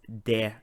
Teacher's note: So you should not pronounce the T at the end of det.